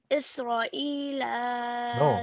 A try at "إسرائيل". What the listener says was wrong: No. Stretch. Isra. There is a stretch right here. Isra.